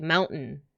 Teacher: Californian accent also includes a glottal stop instead of T. · If it's in the middle of like a fast sentence, I'll be like mountain, you know, like I don't actually say the T.